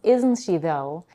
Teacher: isn't she though is typically stated with a falling intonation which indicates a more assertive and confirmatory statement rather than a question